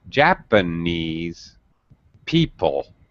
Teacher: i'm changing the stress i'm stressing ja